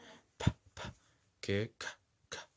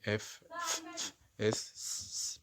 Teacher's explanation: طبعا الأصوات ال ED تتنطق T لو جه قبلها voiceless، يعني صوت مفيش vibration في الأحبال الصوتية، مفيش vibration في الفوكال كوردز اللي هي الأحبال الصوتية